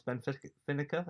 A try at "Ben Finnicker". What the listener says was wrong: No, it's spelt like Ben Finnicker, but you say it Ben Finica. It's got an accent.